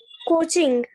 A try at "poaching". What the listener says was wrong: कोचिंग नहीं, पोचिंग, P P P for parrot, ठीक है, पोचिंग।